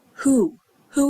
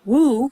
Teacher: even though it's spelled with a w we only hear the h